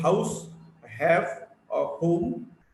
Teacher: H is a voiceless glottal fricative.